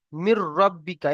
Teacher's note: কারণ এখানে মিলিয়ে পড়তে হবে এবং ঈদগামে তাম র এসে, দেখেন এই যে নুন সাকিন দেখতে পাচ্ছেন, নুন সাকিনের পরে কি এসছে? নুন সাকিনের পরে র এসছে, তাই গণনা করে পড়া যাবে না।